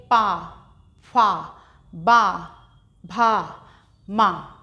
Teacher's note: इनका उच्चारण करते समय ओष्ठ यानी होंठ की सहायता ली जाती है हमारी